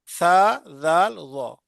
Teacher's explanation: जबान की नोक ऊपर वाले दो दांतों के सिरे से लगे